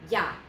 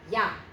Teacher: Okay, so this is E and this is A, but we have to get through the E quickly and get to the A, which is the star of the show here. So it's almost more like a Y again. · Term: diphthong